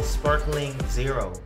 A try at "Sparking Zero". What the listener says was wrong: It's not sparkling, it's sparking. Yeah, You made it really like gay, like Sparkling Zero.